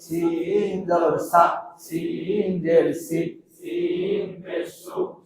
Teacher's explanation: সামনের নিচের দাঁতের আগা থেকে শীষ সহ পাতলা ভাবে আদায় হবে।